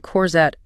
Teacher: And remember, the stress is at the end. Corette. Don't bark at it.